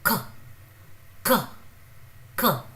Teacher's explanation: It is aspirated. It is throwing out some air along with its pronunciation.